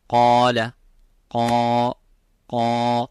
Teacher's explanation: so the alif is mufakham, it is a heavy because of the qaf. So whenever the letter is heavy, you make the letter alif qaf, the letter alif of mad heavy.